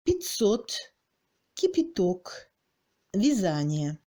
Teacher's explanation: Après une consonne molle, dans la position du premier degré de réduction, dans une syllabe prétonique, le A est toujours le I raccourci.